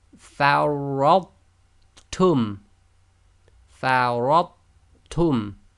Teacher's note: Note, in this case there is no shadda on the ta. We do not do the echo on the tha, i.e. we seamlessly join the sound of the tha to the ta.